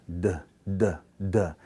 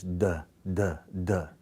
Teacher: You put your tongue on that alveolar ridge, you break away from that ridge, but you have vibration in your vocal cords. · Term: voiced